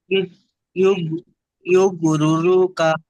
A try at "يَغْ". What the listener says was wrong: আচ্ছা, ইউগ নয়, ইয়া গইন জাবার ইয়াগো।